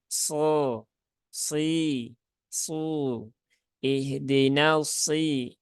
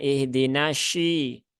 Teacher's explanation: ketika mengucapkan huruf shad, maka naikkan pangkal lidahnya